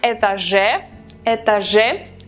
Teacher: the stress syllable is on the last э, этаже